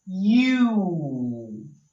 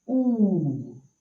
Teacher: Sometimes the letter U just says ooh. So you don't hear the y sound.